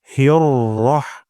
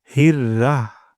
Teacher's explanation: হিয়র, এখানে আমাদের অনেক সময় এমনটি হওয়া যায় হির, হির হয়ে যায়। এখানে হা চিকন হবে, র মোটা হবে।